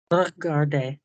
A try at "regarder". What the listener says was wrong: Good, but don't do a R and then the word. I'm so sorry, guys. Do a R while you're aiming for the vowel.